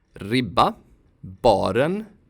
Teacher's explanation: You don't have to make it long, just [ɾ] is enough.